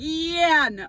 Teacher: the emphasis is on yeah